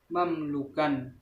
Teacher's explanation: Bacaan mim disuarakan dengan terang dan jelas di bibir serta mulut tertutup.